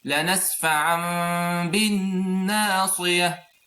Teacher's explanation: I did إخفاء of the meme and I make lengthening for 2 units of time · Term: hidden meme